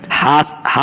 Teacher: काकल वर्ण वो होता है जो कंठ द्वार से सीधी हवा निकले और उच्चारण हो हा हा बिल्कुल कंठ द्वार से निकलता है जहां से कंठ · कंठ द्वार से सीधी हवा निकले और उच्चारण हो हा हा बिल्कुल कंठ द्वार से निकलता है जहां से कंठ शुरू हुआ है